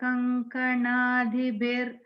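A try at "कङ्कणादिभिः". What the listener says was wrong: Bihi, make it Bihi. If you have a ir there.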